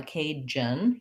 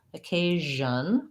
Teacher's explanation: the sound needs to continue but not have any pushed out air · it sounds like the sh sound except my voice is on